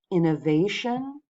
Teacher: Not the last, but the second to last syllable that's going to get the stress when there's a shun ending.